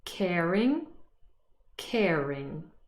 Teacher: the r is before the vowel sound and we pronounce it in rhotic and non-rhotic accent. So there's no difference now anymore.